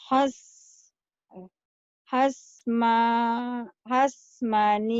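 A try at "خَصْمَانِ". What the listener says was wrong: Bukan has. Tapi itu huruf Jawa. Khos. Khos. Bukan has, tapi khos.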